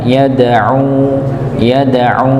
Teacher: huruf dal sekali lagi, huruf yang punya sifat qalqalah, dipantulkan ketika dalam keadaan sukun